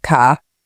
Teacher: It's technically called nonroticity. In many British accents, the R isn't pronounced if it comes at the end of a word or before a consonant like car